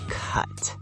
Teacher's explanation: For cut, your mouth is slightly less open and the sound comes from deeper in your throat.